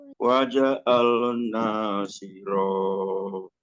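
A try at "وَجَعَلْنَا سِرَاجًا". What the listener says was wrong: Kurang tinggi berarti ya. Waja'alna sirajan wahaja. Waja'alna sirajan wahaja.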